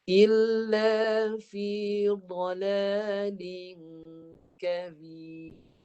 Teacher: Ra yang duduk di hujung ni dimatikan dan nipis bunyinya kerana huruf ba baris bawah. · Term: nipiskan ra